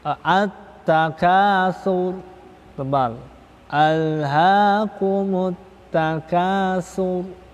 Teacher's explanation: tebal karena di akhir kalimat dimatikan, diwakafkan sebelumnya berharokat doma